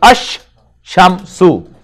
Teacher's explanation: So here lam is being pronounced, and here lam is just written there, but it is silent, not being pronounced. Instead, sheen has got tashdeed, so it will be pronounced double